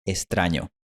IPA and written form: estɾaɲo (extraño)